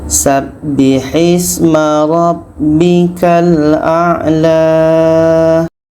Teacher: bikal a la ini panjang dua harakat karena ada alif. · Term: alif maksurah